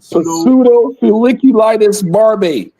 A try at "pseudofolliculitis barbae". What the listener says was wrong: Yeah, pseudo, not pseudo. The P is kind of silent, so it's pseudo folliculitis barbae, right?